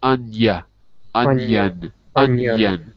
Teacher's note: the I gets joined together with the N